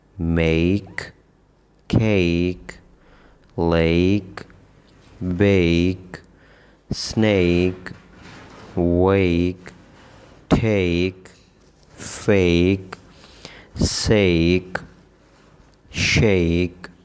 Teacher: اس صورت میں اس کی آواز ہے اے، صحیح ہے، یعنی اے کی آواز ہوگی، اور اے کے فوراً بعد ہلکی سی جو ہے وہ آئی کی آواز یا ای کی آواز آئے گی